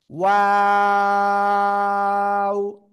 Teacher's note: দুই ঠোঁট গোল শুরুতে হবে, মাঝখানে দুই দিকে প্রসারিত হবে, আবার শেষে গোল হবে।